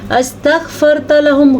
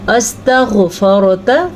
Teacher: गैन का मखरज पुर पढ़ा जाता है, हरूफ़े मुस्तारिया में शामिल है, तो गैन को हम पुर करके पढ़ेंगे। पुर का मतलब है मोटा करके पढ़ेंगे।